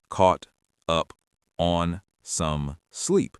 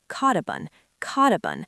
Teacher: The T at the end of caught connects directly to the U at the start of up. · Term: linking